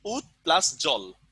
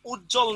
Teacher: দুটো ভিন্ন ধ্বনিকে যদি এক করা হয়, মানে একত্র করা হয়, তাহলে সেটাই কি সমীভবনের উদাহরণ। দেখেন তো, ত আর জ ভিন্ন ভিন্ন, কিন্তু আমরা এটাকে জ জ উচ্চারণ করতেছি